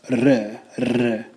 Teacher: proper Turkish requires you to roll your R's